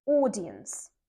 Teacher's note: And the stress is on the first syllable